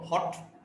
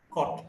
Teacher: back, between open and half open, rounded, short vowel